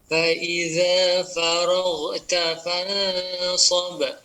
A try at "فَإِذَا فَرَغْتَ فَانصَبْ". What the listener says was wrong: Baik, ya itu baru tawassut ya, belum mengalir banyak. alirkan sempurna Pak. Cuman mungkin perhatian kepada sifat ya. Tapi secara keumuman Bapak makhraj sudah betul ya.